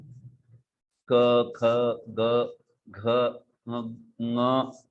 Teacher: जिह्वा के पीछे का भाग, उस कोमल भाग को लग के ये वर्ण उच्चारण किए जाते हैं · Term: कंठ्य